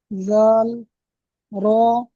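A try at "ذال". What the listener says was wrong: মাশাল্লাহ, দেখেন, আপনার পড়া অনেক সুন্দর হয়েছে, কিন্তু টান টোনগুলো একটু অসুবিধা হয়েছে। দেখেন, দাল 3 আলিফ পরিমাণ টান, দাল পড়তে হবে, 3 আলিফ পরিমাণ টান দিতে পারে, জাল, জাল, 3 আলিফ পরিমাণ করে টান দিয়ে পড়তে হবে, ঠিক আছে ।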